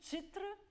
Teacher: when you sing zitre, you need a pure E, just to give you the voice, the bloom.